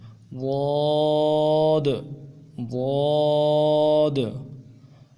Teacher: زبان کو دونوں طرف کے دانتوں کے ساتھ لگا کے ادا کریں گے۔ اگر وہ مشکل ہے تو ایک طرف کے دانتوں کے ساتھ جو سائڈوں کے دانت ہیں ان کے ساتھ لگا کے ادا کریں گے۔